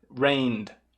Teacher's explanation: rain já termina vozeado, então faz um som vozeado do D